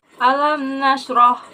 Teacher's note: Alam nasroh yang pertama yaitu izhar syafawi. Karena terdapat mim mati bertemu dengan nun. yang harus dibaca dengan jelas.